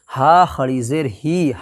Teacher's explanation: کھڑی زیر کو ایک الف کے برابر کھینچ کر کے ادا کریں گے